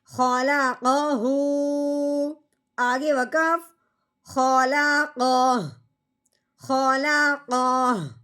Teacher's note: اب جب ہم نے وقف کرنا ہے الٹا پیش گرانا ہے، ہا کی آواز نکالنی ہے صرف، وہ بھی ساکن کرتے ہوئے